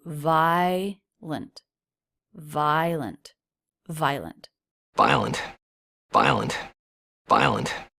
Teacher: It looks like 3 syllables, but most native speakers will just pronounce it as 2.